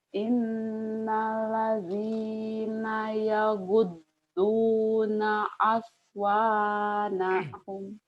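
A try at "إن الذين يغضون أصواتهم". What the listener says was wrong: Aswata. Iya, aswatahum bukan aswanahum ya, ulang lagi.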